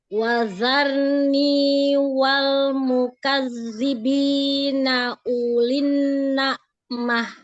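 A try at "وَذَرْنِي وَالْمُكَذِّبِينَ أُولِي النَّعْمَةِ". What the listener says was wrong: Kenapa masih kayak huruf zai ya? Huruf zalnya jangan terlalu digesek, ya. Jadi ujung lidahnya fokuskan. Mukadzi, ujung lidahnya sedikit. Mukadzi. Jangan terlalu banyak, keluarnya sedikit aja. Mukadzi. Lagi sedikit lagi, tipiskan lagi. Mukadzi. Iya, dikit aja, keluarnya jangan terlalu banyak. Kalau keluarnya terlalu banyak nanti kayak huruf zai ya, karena kayak seperti ada sofir pada huruf zai. Mukadzi, Mukadzi.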